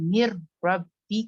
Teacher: نون completely گر رہا، را کی آواز نکل رہی ہے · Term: کمپلیٹ ادغام وداؤٹ غنہ